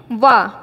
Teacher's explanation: जो हमारा दांत है वो किसको टच करता है हमारे ओट को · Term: दंत ओष्ठ